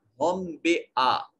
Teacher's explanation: میم ساکن کے بعد با ہے تو یہاں جو ہے وہ اخفائے شفوی ہوگا